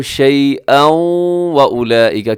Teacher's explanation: کیونکہ تنوین کے بعد واو ہے، واو حروف یرملون میں ہے تو وہاں ادغام ہوگا غنے کے ساتھ